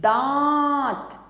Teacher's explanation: इसका उच्चारण नाक और मुख दोनों की सहायता से किया जाता है। नाक से भी किया जाता है और मुख से भी। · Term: अनुनासिक